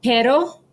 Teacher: pero with a quick tap of the roof of your mouth with your tongue. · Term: soft d